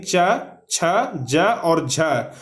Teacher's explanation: तो च वर्ग या और तालव्य स, इसका उच्चारण जो है वह तालु से किया जाता है।